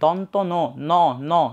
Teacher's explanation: জিহ্বার ডগাটা একটু নিচে নিচে নেমে আসতেছে, মানে হচ্ছে দাঁতের থেকে দাঁতের গোড়ায় গিয়ে স্পর্শ করতেছে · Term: দন্তমূলীয়